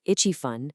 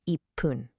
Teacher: Visually, it's written with a small tsu character, but vocally, it acts like a tiny micro-pause. It's a little catch in your throat that doubles the consonant. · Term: gemination